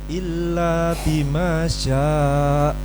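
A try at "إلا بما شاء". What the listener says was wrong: Nah, nanti dilatih kontrol panjang pendeknya ya. Tadi panjang pendeknya ada sebagian yang kurang pas. Bersama wala yuhituna bi syai'im min ilmihi illa bima syaa. Kasih angkatan ringan di akhir. Syaa. Jadi dek gitu pas hamzahnya itu syaa. Ini nyantolnya tuh biar mantep gitu. Enggak ambigu. Kalau begini ambigu. Bima syaa.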